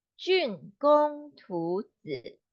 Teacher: 竣 is fourth tone and 工 is first tone. So 竣 will be like G, but we press harder.